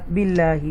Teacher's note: ये अल्लाह के नाम से पहले ज़ेर आ रही है, तो लिहाजा ये तरकीक के साथ पढ़ेंगे, बारीक सॉफ्ट डेलिकेसी के साथ